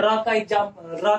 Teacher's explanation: जैसे र का उच्चारण अगर हम करते हैं तो जो यह वायु होती है वह कुछ रगड़ खाते हुए आती है, इसलिए हम लुंठित वर्ण भी कहते हैं।